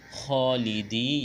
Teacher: یا مدہ ہے، ایک الف کے برابر کھینچنا ہے